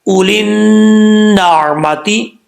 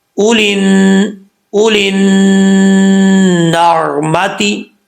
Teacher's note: لام کے بعد یا الف لام بھی نہیں پڑھیں گے، لام کو ڈائریکٹ نون سے ملائیں گے